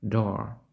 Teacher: він вимовляється дещо з придихом